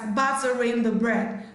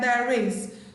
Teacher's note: It's only going to be pronounced, it's going to be linked in a phrase or in a sentence whereby a vowel sound, not necessarily letter, maybe a vowel letter, but if it also makes vowel sound, you link the R ending the word batter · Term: linking R